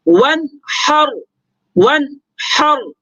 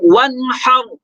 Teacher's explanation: اب یہاں پہ آپ دیکھ رہے ہیں کہ نون ساکن کے بعد ہا ہے حروف حلقی میں سے، لہٰذا نون میں اخفا نہیں کریں گے، نون کو ظاہر کر کے واضح کر کے پڑھیں گے، یوں پڑھیں گے ون حر. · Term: اظہار حلقی